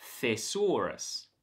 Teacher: The second syllable is stressed and it has an or vowel, thesaurus.